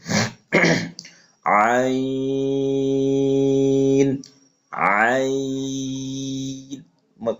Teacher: খেয়াল রাখবেন হরফটা যেন নাকের ভিতরে না যায়।